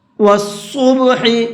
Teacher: صاد کو پر کر کے پڑھیں گے